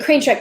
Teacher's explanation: crane truck actually is more of a spondee because it has two stressed syllables